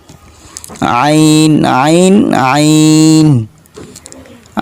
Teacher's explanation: এটা দুই নাম্বার মাখরাজে আছে যে হলকের মধ্যখান হইতে উচ্চারিত হয়